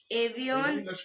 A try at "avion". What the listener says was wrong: No. First of all, it's avion, not avion. Why are you pronouncing? Why are you giving N its complete sound when it is falling in the end? And why A is being pronounced as A only? In French, letter A is what? A. So it is avion.